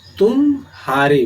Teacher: म ह में संक्रमण या गमन या उच्चारण में तीव्रता होती है, यानी शीघ्रता से हम इसका उच्चारण करते हैं। अगर ऐसा न करें तो अगर हम इसमें विराम या अवसान की स्थिति उत्पन्न करेंगे तब यह शब्द बन जाएगा तुम हारे। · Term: शीघ्र संक्रमण